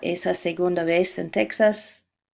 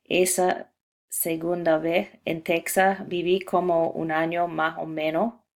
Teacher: Este es otro ejemplo de la aspiración de S de mi entrevista. Como se puede ver, el fenómeno ocurre también con la letra Z al final de la palabra vez.